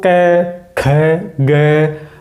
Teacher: जब भी हम कै वाली लाइन बोलते हैं, कै वर्ण वाली लाइन बोलेंगे, तो यहाँ पर कंठ के ऊपर ज़्यादा जोर पड़ने वाला। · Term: कंठ वाले